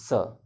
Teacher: दंतमूल मतलब मसूड़ा, मतलब वही आप मसूड़े पर, दांत के जड़ पर और मसूड़े के किनारे पर आप इसको बोलेंगे स